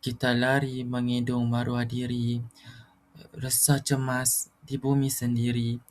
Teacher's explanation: Di situ tiada tekanan emosi, tiada penjiwaan. Nadanya senada sahaja, mendatar dan dia kurang lancar ataupun sukar difahami itu sebab sebab dia punya nada itu terlalu rendah.